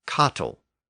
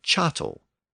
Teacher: the Norman dialect of French often retained that hard K sound at the beginning of certain Latin words